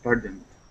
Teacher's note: CES okay good job all right now this word here okay with the Ed ending we're going to say pardoned so right from that n to that D pardoned try that pardoned par good okay now here instead of